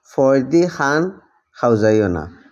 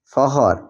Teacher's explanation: সিলেটি নাগরি ফ বর্ণ ইংরেজি এফ বা ফোনেটিক এফ এর সাথে সামান্য স্ট্রেস যুক্ত হয়ে উচ্চারিত হয়। এটা বাংলা ফ মহাপ্রাণধ্বনি নয়।